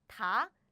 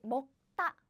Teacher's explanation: However, now you notice something, right? This 먹 is air blocking sound. It's you stop the air. So naturally, the next sound, the next sound comes out more strongly, like 따.